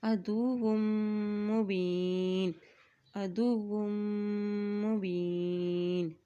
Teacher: वाव की दो पेश को मीम के साथ मिलाते हुए पढ़ेंगे क्योंकि मीम के ऊपर शद है और जब भी मीम के ऊपर शद आ जाती है तो वहाँ पर गुन्ना अदा किया जाता है, ठीक है।